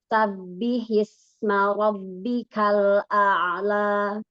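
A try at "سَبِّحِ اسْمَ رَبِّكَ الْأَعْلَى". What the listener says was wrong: Diulang. Sin pada sa, sofirnya, desisnya, belum, masih kurang. Sa. Yang pertama. Sabbi.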